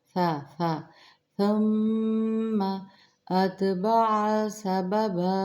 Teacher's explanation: فا کو نرم پڑھیں گے، سیٹی کی آواز نہ آئے بلکہ نرمی کے ساتھ